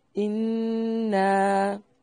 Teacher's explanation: نون مشدد پہ غنہ لازم ہے اور غنہ کی مقدار 1 الف کے برابر ہوگی۔ اِنَّا یعنی 3 سیکنڈ، اور نا الف مدہ ہے، اور الف مدہ کے بعد حمزہ دوسرے کلمہ کے شروع میں ہے، اس لیے یہاں مد ہوگی، بڑی مد، جسے مد منفصل یا مد جائز کہتے ہیں۔